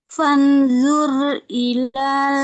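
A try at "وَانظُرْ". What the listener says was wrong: Fanzur atau wanzur? Wanzur. Wanzur.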